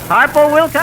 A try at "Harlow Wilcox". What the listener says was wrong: No, Harlow. L, not P.